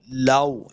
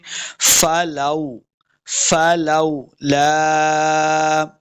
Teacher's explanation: اس کو لمبا نہیں کریں گے، واو کے اوپر اپنے دونوں ہونٹ گول کرنے ہیں